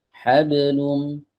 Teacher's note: Kemudian pantulan di huruf ba. Ba itu kan qalqalah. Ini nggak boleh diputus pantulannya.